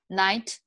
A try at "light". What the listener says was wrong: Okay, you see there's that L-I sound, right? Light. Light. Night, you said night. Light. Yeah, those are two different words, right?